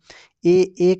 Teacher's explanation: ए कंठ भी है और तालु भी है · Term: कंठ तालव्य स्वर